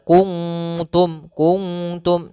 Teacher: karena di sini huruf ta huruf yang tipis. Maka ikhfa-nya pun tipis. Kuntum. Mendekati daripada huruf nun secara sempurna, tapi tidak tidak dibaca kuntum, bukan, tapi di kuntum.